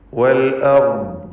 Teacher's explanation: റാഇന് തഫ്ഖീമുണ്ട്, ദ്വാദിനും തഫ്ഖീമാണ്, സുക്കൂനാണ് രണ്ടക്ഷരത്തിനും.